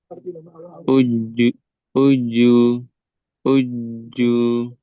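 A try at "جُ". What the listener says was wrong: kurang. Yang doma masih ada udara. Uju, uju.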